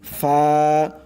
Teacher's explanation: নিচের ঠোঁটের যে পেট আছে মধ্যখান, ঠোঁটের মধ্যখান, উপরের দুই দাঁতের মাথা সেই মধ্যখানে লাগবে। ফা, নরম করে ফা।